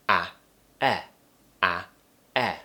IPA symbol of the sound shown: æ